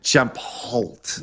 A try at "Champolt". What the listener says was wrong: Shampoo. Shampoo. No, you don't pronounce the end.